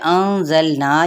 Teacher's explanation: نون پہ افعی حقیقی ہوگا، زا کے صفیر لاتے ہوئے لام کے ساتھ ملائیں گے لیکن لام کو ہلائیں گے نہیں